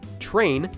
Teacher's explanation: the English word train is actually pronounced with a ch sound, although it's spelled with tr.